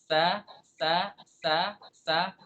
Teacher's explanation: Dari ujung lidah. Ujung lidah, kemudian lidahnya di bawah nggak naik ke atas. Dengan apa? Dengan permukaan dalam gigi bawah, gigi seri bawah. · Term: makhraj sin